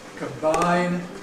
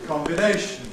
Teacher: Quite a dramatic change from [aɪ] in ‘combine’ [kəmˈbaɪn] to [ɪ] in ‘combination’